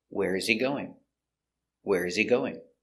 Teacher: It's an information question because you have a question word, where. So the intonation goes down at the end.